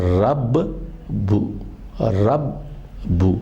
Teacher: با کی آواز 2 مرتبہ نکل رہی ہے، لیکن پہلا با ساکن ہے اور دوسرا وہ متحرک ہے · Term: مشدد